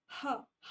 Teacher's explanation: ना ही आपके lips touch हुए ना ही टिथ आपके टच हुए। तो आप ह बोलोगे तो वो साउंड जो है डायरेक्ट आपके ग्लोट से निकलेगी। डायरेक्ट हवा बाहर पास होगी। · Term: ग्लोटर